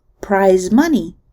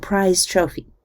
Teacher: You can test this by putting your fingers at the front of your throat in the area of the laryngeal cartilage and saying phrases like prize money and prize trophy. In prize money, the vocal cords vibrate throughout the production of the Z sound, but in prize trophy, the vocal cords cut out a bit early in preparation for the voiceless T sound. We indicate this partial devoicing by a little circle under the symbol for the Z sound.